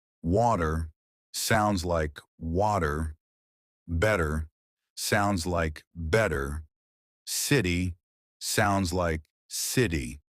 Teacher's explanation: Americans love to soften or remove the T sound. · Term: the T that disappears